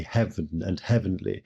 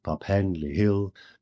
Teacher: words such as even or heaven are pronounced with one syllable fewer than we would pronounce it today